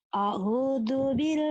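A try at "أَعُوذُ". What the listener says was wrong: ahu, au, au. Kenapa jadi ahu? Ahu, jangan ahu. Au, alif dan ain. Au.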